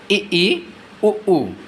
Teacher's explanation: जिन स्वरों के उच्चारण में मुख द्वार सबसे कम खुलता है या लगभग बंद होता है उसे संवर्त स्वर कहते हैं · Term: संवृत स्वर